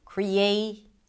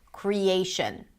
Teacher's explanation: So if we take the word creation, here we have 3 different stresses: primary, secondary, and weak, the schwa. The A is the primary stress.